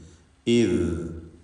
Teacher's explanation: ലൂസാക്കിക്കൊണ്ടാണ് ദാൽ ഉച്ചരിക്കുക, അയവോടുകൂടി. റഖാവ എന്ന സിഫത്ത് അതിനുള്ളതാണ്. അപ്പോൾ ഇദ് ശബ്ദത്തിൻ്റെ ആ ഒഴുക്ക് കണ്ടില്ലേ, അതാണ് റഖാവ കൊണ്ട് ഉദ്ദേശിക്കുന്നത്.